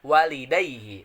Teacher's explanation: madlen tersebut dibacanya sepanjang 2 harakat kayak gitu